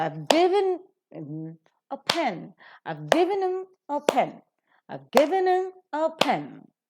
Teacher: given being a verb is accented, pen being a noun is accented. The rest are reduced to their weak forms. · Pen is to be accented and is to be aspirated as well.